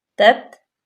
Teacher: تا باریک پڑھیں گے، تا ساکن ہے، بالکل یہاں پہ جما کے ہلائیں گے نہیں